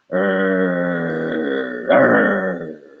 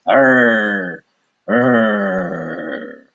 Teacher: the American English R, it's the rhotic R. Your tongue does not move. You can say it all day. Your tongue just stays in the middle of your mouth, hanging out.